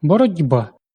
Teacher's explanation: Глухий «ті», уподібнюючись до наступного дзвінкого «б», перетворюється на дзвінкий «ді». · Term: асиміляція за дзвінкістю